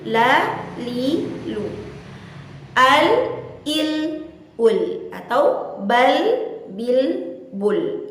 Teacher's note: Huruf lam senantiasa disebut atau diucap dengan suara yang tipis, dengan lidah yang diajak secara rileks atau tenang.